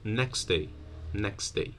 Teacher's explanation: three consonants the one in the middle might be deleted · the T might be deleted